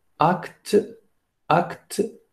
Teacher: Donc la voyelle finale n'est pas prononcée, donc acte. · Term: syllabes dites fermées